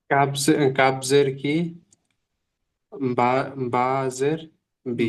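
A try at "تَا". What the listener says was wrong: বা নয়, তা। তা আলিফ জাবার তা।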